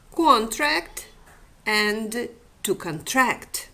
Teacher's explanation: the vowel f in contract is greater the vowel becomes longer the quality of the vowel in the stressed syllable is different from the quality of this vowel in the unstressed position in which it is more narrow